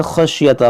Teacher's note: خا حرف مشتعلیہ ہے، شین یہ بڑی شین ہے